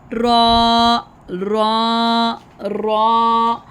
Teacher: डे kids अब हम पढ़ेंगे रॉ। रॉ, रॉ पढ़ते हुए ज़ुबान की नोक ऊपर दांतों के मसूड़ों के साथ लगती हैं और हल्की सी टक्कर यानी लर्ज़श की तरह आवाज़ निकलती है।